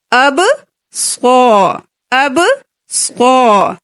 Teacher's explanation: با قلقلہ ہے، صاد موٹے حروف میں سے ہے ، اب صو، اب صو، ریہم، رو کے نیچے زیر ہے